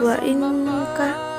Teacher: Ini adalah ikhfa karena ada nun mati menghadapi huruf kaf dan bacaannya samar-samar.